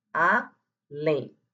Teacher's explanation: Colocou o último o acento na última sílaba para dar essa pronúncia mais forte na última. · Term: oxítona acentuada